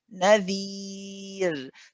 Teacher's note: It has a kasra. And because of this kasra, if I'm stopping, the ra is light